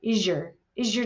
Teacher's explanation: the voiced s sound in American English and it's followed by a y now you're going to get a j sound